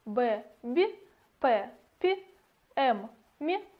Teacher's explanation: Губно-губные согласные. В их произнесении нижняя и верхняя губа активно участвуют, поэтому они называются губно-губными.